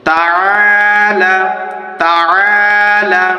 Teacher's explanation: আইনটি কণ্ঠনালীর মধ্য থেকে বেরিয়ে আসবে যেই কারণে আ উচ্চারণ করতে হবে